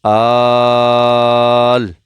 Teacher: حمزہ لام کھڑا زبر مد آل۔ اچھا اس مدہ کو جو ہے نا وہ 5 الف کے برابر، 5 سیکنڈ کے برابر کھینچے، آل، حمزہ کھڑا زبر آ، نون زبر نا، آل آنا۔